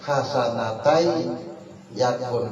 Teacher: Tulisannya hasanatan yakun lahu tapi bacanya hasanatai yakun karena tanwin bertemu iya bertasdid idgham bi gunna juga ya.